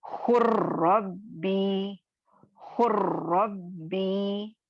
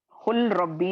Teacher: यहाँ पे जो लाम साकिन है इसकी सिफत मुकम्मल तौर पर खत्म हो जाएगी, बाकी नहीं रहेगी, और हम रॉ मुशद्दद को पढ़ेंगे, ठीक है, मर्ज कर देंगे लाम को रॉ में। खुर्रब्बी, खुर्रब्बी ऐसे पढ़ेंगे हम लोग, खुल रब्बी नहीं पढ़ेंगे, समझ में आया। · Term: इदगामे ताम